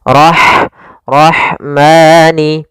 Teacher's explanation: Kemudian pada lafal rah ada huruf ha yang memiliki sifat hames yaitu harus ada jaryanun nafas harus ada mengalirnya nafas kita